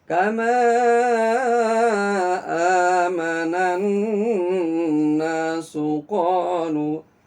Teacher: Ditahan gunahnya pas saat nun tasdidnya.